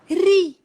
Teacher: Tetapi ra yang berbaris bawah, dia sifat dia nipis.